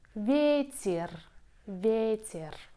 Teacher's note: the second syllable is unstressed. Ye becomes i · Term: vowel reduction